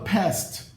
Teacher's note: O D no final passa a ser pronunciado como T se a consoante final do verbo for uma consoante surda, como S.